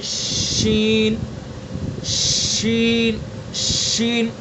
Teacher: شین کا مخرج وہی ہے جو جیم کا تھا، یعنی زبان کا بیچ اور اس کے مقابل اوپر کا تالو